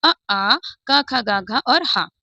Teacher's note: कंठ से उच्चारित होने वाले सिर्फ सात हमारे अक्षर हैं।